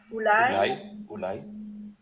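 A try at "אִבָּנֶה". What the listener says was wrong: Ibané. Attention, là tu confonds toujours le ségol avec un A.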